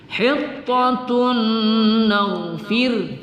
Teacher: Hittatun fir ya, karena sebelumnya berbaris kasrah kita baca tarkik, kita baca tipis ya.